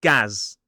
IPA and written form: ɡæz (Gaz)